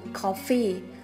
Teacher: từ coffee, trọng âm rơi vào âm đầu tiên